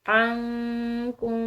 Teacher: نون ساکن کے بعد کاف ہے، باریک کاف، ٹھیک ہے، یہ حروف اخفا میں سے ہے، تو اس کی وجہ سے ہم اس نون ساکن پر اخفا کریں گے